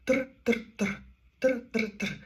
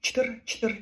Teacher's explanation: В даному випадку чтир у складі у складі чтир є р складотворною. І це один склад чтр.